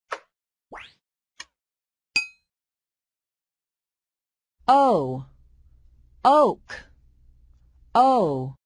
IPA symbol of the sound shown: ō